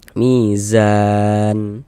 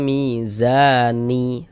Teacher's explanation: Salah, tapi kita baca mizan. Huruf nunnya kita sukunkan ya, kita matikan.